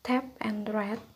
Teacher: Bagian oral diblokir dengan menekan ujung lidah ke alveolar. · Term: stop